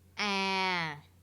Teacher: tone which in vietnamese is ah so as you can hear we start a little bit lower than this first tone and then there is a gradual decline and then we level out at a quite deep level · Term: second tone